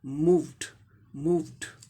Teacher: अब यहाँ देखिए, मूव हो गया, एम का म हो गया, ओ का ऊ, लॉन्ग ऊ साउंड, और वी का व साउंड हो गया, मूव। आई व साउंड वॉइस्ड है, इसीलिए इसका inflection past participle inflection ED का उच्चारण क्या हो जाएगा, ड हो जाएगा